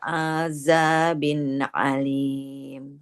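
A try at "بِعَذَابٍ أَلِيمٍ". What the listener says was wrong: ainnya enggak boleh panjang.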